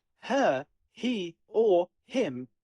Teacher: think of it like a soft breath of air coming out right before you say the rest of the word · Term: The H sound